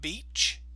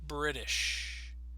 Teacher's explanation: See how with the ch sound we kind of stop, whereas with British we can stretch that sound longer